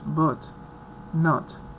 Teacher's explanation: so we have low, spread, relaxed, not R coloring, short